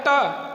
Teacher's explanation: टा देखिए जिह्वा मुड़ जाती है, मूर्धा उसका उच्चारण स्थान है।